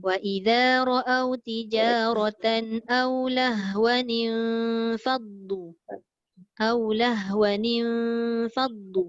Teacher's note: Dengung lah yang tadi Ustazah katakan. Dengung sebab dia jumpa dengan fa. Dia jadi ikhfa.